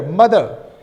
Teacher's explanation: Here mother, only schwa, no rhoticity is shown, right? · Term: non-rhotic accent